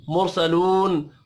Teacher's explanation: रा साकिन से पिछले हर्फ के ऊपर पेश है, रा को पुर पढ़ेंगे।